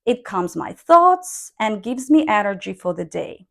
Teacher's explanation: the basic intonation here is rising when the idea is finished but the whole sentence hasn't finished yet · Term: rising inonation